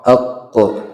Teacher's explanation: Sisi lidah naik juga ke atas bersama tengahnya, ya, itu namanya tafkhim atau juga isti'la'nya qaf.